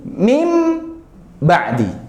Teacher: Artinya berarti merubah suara nun sukun menjadi mim sukun. yang tadinya min ba'di nunnya menjadi mim. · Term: iqlab, iklab